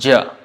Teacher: palatal voiced unaspirated is jia